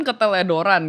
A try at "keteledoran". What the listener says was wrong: Tuh ada something wrong gitu antara L sama R.